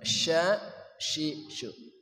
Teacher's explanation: syin anginnya tafasyi menyebar di dalam mulut kita